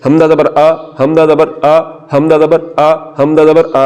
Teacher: آگے آگے حمدہ اور عین، تو ان دونوں حرفوں میں بھی یہی فرق ہے کہ حمدہ کو حلق کے نیچے والے حصے سے پڑھنا ہے.